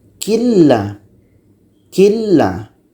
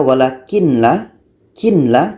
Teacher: Ini nun mati la, nun mati masuk, idgham ke la. Jadi tidak dengung ya, idgham bila gunnah tak dengung.